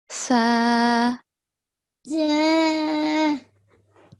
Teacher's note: for Sa, the tip of the tongue is touching upper front 2 teeth.